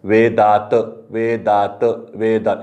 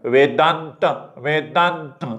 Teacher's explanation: लगेच कळतं की अरे नचा उच्चार नाकातून होत होता, याचा अर्थ हा पक्का अनुस्वार आहे आणि हा कोण याच्यातला ओझरता उच्चाराचा आहे.